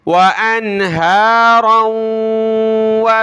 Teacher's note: तमीदा बिकुम व अनहारन व, वाव ज़बर वा, हमज़ा नून ज़बर अन, व अन, हा खड़ा ज़बर हा, व अनहा, हा खड़ा ज़बर हा, व अनहा, रा को आगे वाव के साथ मिलाया, नाक में आवाज़ पैदा की, रा वाव दो ज़बर राऊं, वाव ज़बर वा।